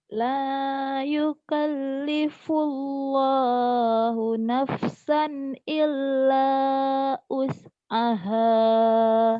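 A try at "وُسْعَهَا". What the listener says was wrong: Bukan us ya wus, usaha illa wus'ah. Kamu teh us tapi karena ragu jadi kadang-kadangnya kayak us. Padahal tadi bener wus. pengucapannya kayak us. La yukallifullahu nafsan illa wus'aha.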